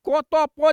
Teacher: ई क त प जे छियै से अघोष अल्प प्राण छियै